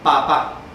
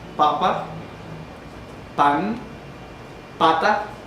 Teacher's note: Es ese sonido de pa. Antes de que suene la A, hay una oclusión completa, el aire no sale, sino que se obstruye totalmente. A ese tipo de sonidos son los que llamamos oclusivos. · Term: oclusiva bilabial sorda